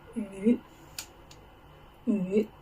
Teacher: falling rising tone, mid, deep down, rise up